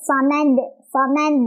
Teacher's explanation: sukun kan Kalau berhenti tu maka jadilah dia e qqalah kubra cara bacanya adalah memantul dengan besar pantulannya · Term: Qalqalah kubra, qalqalah kubra